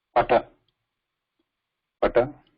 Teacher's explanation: not using any part of the tongue to stop the area we are using lips only to stop the air and where the air is being stopped at the lips only · The position is lips, ostha, and instrument is also lips.